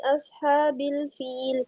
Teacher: اصحاب الفیل، اب لام ساکن ہے اور فا کے نیچے کسرہ ہے اور یہاں پہ یا مدہ بھی ہو رہی ہے تو اس کو لمبا کریں گے اور اینڈ پہ لام ساکن ہو جائے گا تو اس کو ہلانا نہیں ہے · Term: مد عارض وقفی